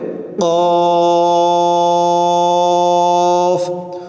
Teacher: আওয়াজটা গলার ভিতর থেকে বাড়ি দিয়ে আনতে হবে।